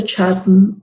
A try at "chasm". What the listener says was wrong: Chasm, the H is not pronounced.